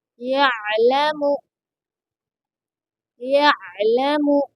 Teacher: یا عین زبر یا، لام زبر لا، یعل، میم پیش مو، یعلم۔ عین کو درمیان حلق سے ادا کریں گے